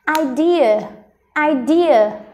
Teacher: Trọng âm rơi âm thứ hai nên mình đọc cao âm thứ hai này.